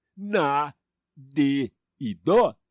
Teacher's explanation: A regra só manda acentuar os monossílabos tônicos que terminam em A, E e O. Na, de e dó não são tônicos. Eles são pronunciados fraquinho. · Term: monossílabos átonos